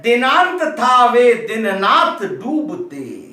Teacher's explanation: दंत से उच्चारित होने वाले ता था दा और ना की आवृत्ति हुई है, इसलिए यहां पर श्रुत्तानुप्रास, ये दंत से दांत से उच्चारित करने किए जाने वाले वर्ण है।